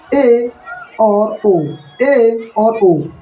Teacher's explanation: अर्ध विवृत मतलब मुख आधा आधा खुलेगा मुख आधा खुलेगा और इसमें आ जाते हैं भाई ए और